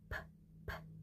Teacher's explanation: For example, when we say p, p in pen, the lips is closed and then open. The air goes through the mouth.